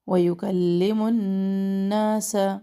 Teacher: نون شد کو پورا ٹائم دے، نا الف مدہ اس کو پورا ٹائم دے